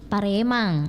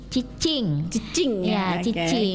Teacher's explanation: yang berakhiran n itu kalau di dalam bahasa Bugis akan berubah menjadi ng, bunyi nasal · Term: bunyi nasal ng